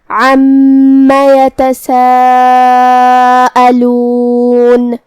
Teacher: عین کو ہم حلق کے درمیان والی حصے سے ادا کریں گے. پھر میم پہ تشدید ہے تو 2 حرف کے برابر ہمیں میم کو پڑھنا ہے کیونکہ تشدید کی اصلیت 2 حرف ہے.